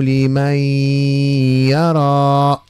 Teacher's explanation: إدغام بغنة ناقص. علاش؟ لأنه النون بقات صفة منها لأن الياء ليس بحرف أغن